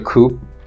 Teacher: the p is not audibly released